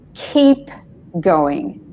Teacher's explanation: So the e has to be longer, which if you make your vowels longer, you actually slow down because you've got to take the time to make it a bit longer, yeah?